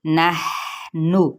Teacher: ہا پہ ہمس ہو رہا ہے اور یہ ایک چلتی ہوئی آواز کے ساتھ جائیں گے